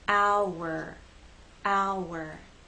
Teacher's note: the sounds connect with the help of the W sound